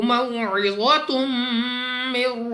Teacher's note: واو مستعلیہ میں سے ہے، موٹا پڑھنا ہے. 2 پیش کی تنوین کے بعد میم غنہ کر کے پڑھیں گے